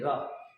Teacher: जीभ जो है ऊपर उठ जाता है और थोड़ी सी रगड़ के साथ आगे आता है। लुढ़क के आगे आता है।